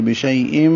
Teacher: ادغام مع الغنہ ہے، آواز ناک میں جائے گی